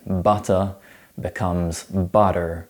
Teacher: pronouncing the letter R all the time and voicing the T sound between vows